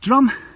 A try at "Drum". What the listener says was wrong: Drim, get in the Welsh. U says E. Like Llandudno. So it's Drim.